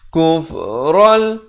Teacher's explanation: Tanwin bertemu lam. Asalnya kufran, tapi bila datang lam nama hukumnya masuk tanpa dengung, iaitu idgham bila gunnah. Ral terus begitu saja, jangan didengung, jangan dipanjang.